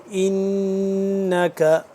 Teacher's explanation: نون مشدد، اس پہ ہم کیا کریں گے، غنہ کریں گے